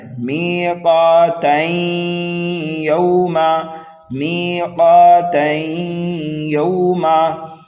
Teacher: تو ہمیں ملا کر اس طرح پڑھنا ہے، میقاتین یوما، میقاتین یوما، تنوین کے بعد میں یا آ رہا ہے یرملون میں سے، تو یہاں پر ہوگا ادغام